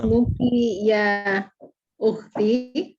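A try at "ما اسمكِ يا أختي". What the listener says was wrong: Aywa, ahsanti, sahih.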